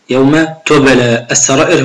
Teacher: يوم تبلى، لابد من قراءة حرف الباء، أقول يوم تبلى السرائر، هنا المد المتصل مقداره 4 حركات